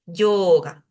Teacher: Esa O debería durar un poquito más. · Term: sonido largo